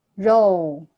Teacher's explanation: I like how you added intonation to row. You went row and it went high, low.